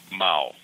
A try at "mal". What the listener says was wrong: You pronounce the A a little bit more instead of O, you know, like a mal.